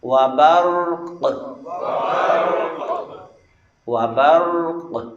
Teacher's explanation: دو ساکن آگے ہیں، ایک را اور دوسرا قاف، اس پر وقف کرنا ہے اور قاف پر قلقلہ بھی کرنا ہے